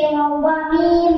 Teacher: 15 নম্বর মাখরাজ দুই ঠোঁট হইতে ওয়াও বা মিম উচ্চারিত হয়। ওয়াও ঠোঁট গোল করিয়া বা ঠোঁটের ভিজে ভিজে মিম ঠোঁটের শুকনা দেবে।